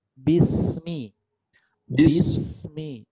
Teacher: Jadi bunyi sin itu ada ada udara mengalir, suara mengalir. Jadi udara dan suara sin sambungkan dengan mim.